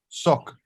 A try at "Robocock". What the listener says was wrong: No, over here you pronounce a C as K.